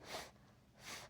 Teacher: when you pronounce the sound of f we cannot feel the vibration in the throat so it is unvoiced